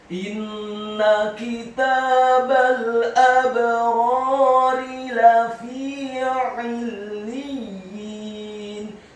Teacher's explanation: huruf ra-nya dibaca tafkhim tebal fathah dua harokat karena setelahnya ada alif. Kemudian huruf ra yang kedua dibaca tipis kasrah satu harokat.